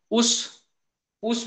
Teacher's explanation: ऊस म्हणायला गेल की ओट चिटकतात एकमेकांना